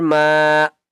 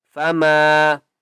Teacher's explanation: میم کو ایک الف کی مقدار کھینچ کر پڑھیں گے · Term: مدہ